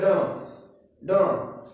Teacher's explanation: अगला कह रहा है उत्क्षिप्त वर्ण व्यंजन, जो हमारा है ड, जिसमें जीव नौ, जो जीव की नोक होती है कठोर तालु से टकरा कर नीचे आती है।